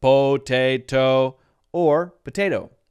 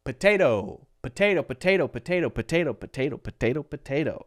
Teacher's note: The second syllable, te, is stressed. The first one is totally unstressed. And so it has the schwa sound. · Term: stressed syllable